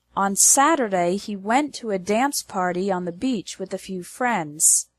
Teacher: The stress is on the words Saturday, went, dance, party, beach, and friends.